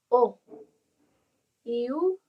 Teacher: cuando nosotros pronunciamos la O hacemos un círculo alrededor de nuestros labios